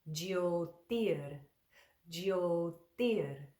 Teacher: we put that tongue on the back of the front teeth for tir